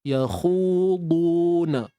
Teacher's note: Khu kena muncung bibir sebab dia baris depan.